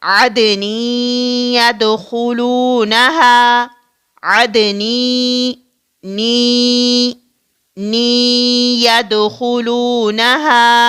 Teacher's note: ادغام ہوگا، یعنی اس تنوین کو ہم کیا کریں گے؟ ملائیں گے، یعنی مدغم کریں گے